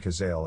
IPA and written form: kəˈzeɪl (Cazale)